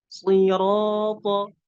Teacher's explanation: Jadi dia tetap dalam keadaan mufakham apapun harokatnya. Tafkhimnya nggak berkurang sedikit pun apapun harokatnya, tetap tebal huruf shad.